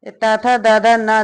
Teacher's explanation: जिनका उच्चारण ऊपर के दांतों पर जीभ लगाने से होता है उसे दंत्य कहते हैं। इसके अंतर्गत ता वर्ग तथा दादा ना, ला और सा आते हैं। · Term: दंत्य व्यंजन